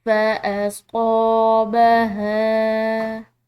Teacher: ہا کے بعد الف مدہ بھی آ رہی ہے اور ساتھ میں اس کے اوپر چھوٹی مد بھی ہے، تو اس کو ہم نے کھنچاؤ دے کر پڑھنا ہے، لمبا ادا کرنا ہے